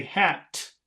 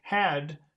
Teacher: uh stop it it goes down stop it goes down yes so when you say hat the air comes out but when you say had the air goes down